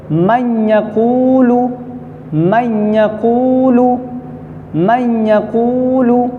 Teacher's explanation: کیسے ادغام کریں گے یہ دیکھیے، اس میں ادغام ہوگا من یقول، پہلی مثال نون ساکن ہے، یہ اصل لفظ تھا من یقول، من یقول اصل لفظ، لیکن نون ساکن کے بعد حروف یرملون میں سے یا آ رہا ہے، اس لیے نون نہیں پڑھا جائے گا، تو ڈائریکٹ نون کا یا میں ادغام ہو جائے گا۔